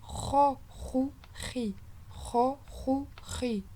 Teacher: Vous voyez, le E se transforme en O un peu. Ro. Ce ne sera pas du Ré. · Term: lettre qui est grave